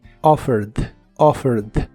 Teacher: en el pasado se le agrega una e d Aunque solo se pronuncia la d offered offered y lo usas en ideas como I offered him · Es muy similar a la versión del presente, solo que en el pasado se le agrega una ed, aunque solo se pronuncia la d.